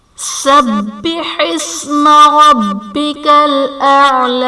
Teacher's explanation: سبح اسم میں با حرف قلقلہ مشدد ہے تو یہاں پر قلقلہ خوب جماؤں کے ساتھ ادا کریں گے، اور ربک الاعلی میں را پر زبر ہے، را کو پر پڑھا جائے گا